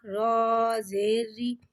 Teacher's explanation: رو کو ایک الف یعنی 2 حرکات کے برابر کھینچ کے پڑھیں گے. رو کے نیچے زیر آ رہا ہے لہٰذا رو کو یہاں پہ باریک پڑھیں گے